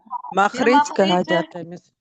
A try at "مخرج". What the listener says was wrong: مخرج نہیں ہے، مخرج ہے، را پہ زبر رکھیں۔